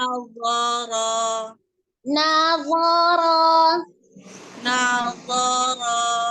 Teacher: sama-sama semua adalah al-lisan ya, baik nun, wo maupun ro. Jadi tidak berubah. Nawara. Lidah ininya bentuk lidahnya aja, perpindahan lidahnya aja.